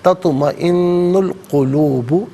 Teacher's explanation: تطمئن میں نون پر پیش ہے، اسے القلوب کی لام ساکن کے ساتھ ملائیں گے، درمیان میں سے الف حمزہ کو حذف کریں گے